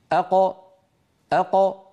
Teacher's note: قد انفتح المخرج وخرجت القاف الساكنة المقلقلة بالتباعد بين طرفي عضو النطق لا بالتصادم. الأصل أن تخرج بالتصادم، لكن لو فعل العرب ذلك لحصل هذا الإزعاج، فبفطرتهم أخرجوا هذه الخمسة بالتباعد بين طرفي عضو النطق دون أن يصاحب ذلك شائبة حركة، لا فتحة ولا ضمة ولا كسرة. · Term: القلقلة